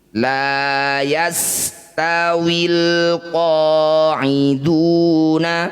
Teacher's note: bunyi lam sukun, baca dengan jelas tanpa diseret atau tawallud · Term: izhar qamariyah